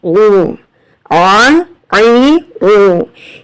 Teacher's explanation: عین کو ادا کرنے کے لیے تھوڑا سا سکویز کرنا پڑے گا، حلق سے آواز رگڑ کر آئے گی. ٹھیک ہے، اور حمزہ کی جو آواز ہوتی ہے وہ بالکل سیدھی اسٹریٹ آتی ہے.